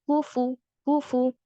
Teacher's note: فا پر جو دمہ ہے وہ نکلنا چاہیے.